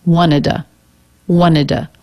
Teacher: when the word before two t o ends in a d it's common to just drop the t sound altogether and just put a schwa at the end